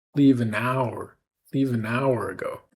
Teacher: the word hour gets really stretched